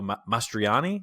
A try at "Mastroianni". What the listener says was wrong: Mastroianni, I think. Extra syllable in there. Mastroianni.